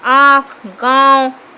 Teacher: अनुनासिक के उच्चारण में नाक से सांस बहुत कम निकलती है अनुनासिक में, और मुंह से अधिक